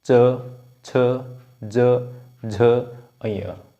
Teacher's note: यह सारे एक ही हमारा इनका उच्चारण स्थान है इनका तालू है